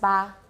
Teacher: This should be just ba. It's not ejective, it's not voiced.